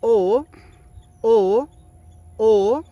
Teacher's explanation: el tercer sonido es la vocal larga con tono alto.